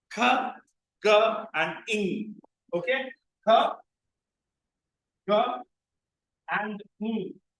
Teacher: we have three velar sounds in English: k, g, and ing · the back of the tongue goes and touches the velum